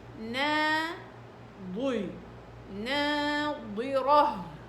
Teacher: فلما تقولي نا، بعدين الضاد ناضي، تستخدميها ضغطة من هنا، ضي، ناضرة، والراء مفخمة والها مرققة، ناضي، ناضرة، من هنا الها، ناظرة، تمام.